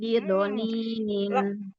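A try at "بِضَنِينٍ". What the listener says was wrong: sekarang huruf dotnya yang kurang tebal. Bido.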